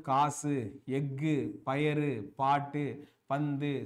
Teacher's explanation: அப்ப இந்த 6 வல்லின உகரங்களும் சொல்லின் இறுதியில் வரும்பொழுது அப்ப கடைசியில வரப்ப மட்டும் தான் என்ன ஆகுது அப்படி பண்ணா ஒரு மாத்திரைக்கு பதிலாக அரை மாத்திரை அளவில் ஒலிக்கிறது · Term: குற்றியல் உகரம்